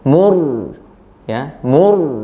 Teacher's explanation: ro-nya mati didahului harokat dhammah, maka dia dibaca tebal ro-nya atau tafkhim